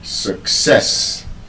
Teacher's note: there's a schwa sound in that letter U.